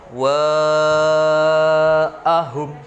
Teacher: Cara bacanya adalah dengan memanjangkan sebanyak 5 sampai 6 ketukan. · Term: Mad wajib mutasil